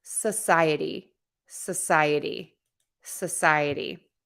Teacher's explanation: I'm making the so part a sa, which is the schwa because that's unstressed. Society, society, and my sigh in the middle is stressed.